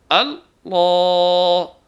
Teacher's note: بھاری پڑھیں گے، اور بھاری پڑھنے کا معیار یہ ہے کہ زبان گول ہو کر اوپر کے تالو سے ملے گی، آواز بھاری ہو جائے گی، الفاظ کو منہ بھر کر ادا کریں گے